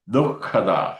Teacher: അവിടെ നമ്മൾ ശ്രദ്ധിക്കേണ്ടത് ദു കഴിഞ്ഞിട്ട് ഒരു ഹ ശബ്ദമുണ്ട് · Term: ജിഹ്വാമൂലികമുണ്ട്